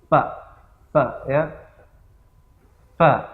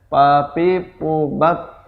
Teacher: ujung gigi seri atas menyentuh perut bibir bawah